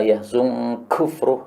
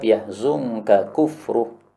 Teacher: Karena nun sebelum kaf itu adalah dibaca ikhfa. · Karena sebelum kaf ada nun. Sehingga bacaannya menjadi ikhfa, yahzunka. Nah, ikhfa itu mirip dengan tasydid.